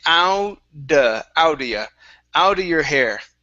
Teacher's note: So use a D sound for that double T.